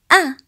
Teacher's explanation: the sound of a as in alif is pronounced from the lower part of throat